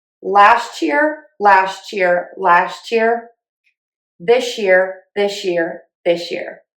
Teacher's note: So we have T plus Y equals ch, and S plus Y equals sh. · you no longer have to say the ya sound in year. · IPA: /læsʧɪr/